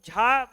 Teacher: झा बोलते समय हमारी वायु की मात्रा ज्यादा होगी